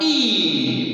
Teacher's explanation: it's a high, closed, front, long, unrounded, tensed vowel